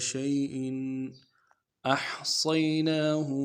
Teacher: وَكُلَّ شَيْءٍ، شَيْءٍ تنوین کو واضح کریں گے، چونکہ غنہ کرنا تھا لیکن اس کے بعد حروف حلقے میں سے حرف آ رہا ہے اس لیے اظہار کریں گے